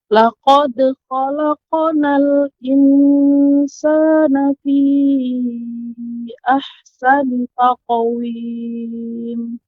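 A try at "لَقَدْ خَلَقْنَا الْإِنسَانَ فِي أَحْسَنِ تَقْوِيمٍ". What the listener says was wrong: Ya, qafnya sudah tebal. Akan tetapi untuk pengucapan ikhfa, nah sekarang ikhfa, jadi ketika membaca disamarkan dengan cara rahangnya dikebawahkan, dibuka, laqad khalaqnal jangan tidak boleh lengket lidahnya. Ya, kalau lidahnya lengket, nah ini kurang tepat. Ya, ini tidak disamarkan namanya. Menempelkan lidah ke langit-langit atas.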